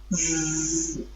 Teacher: Do you feel any vibration in the vocal cord? Yes, you do. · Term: voiced consonant